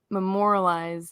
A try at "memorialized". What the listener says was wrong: You left out a syllable, but it was close enough.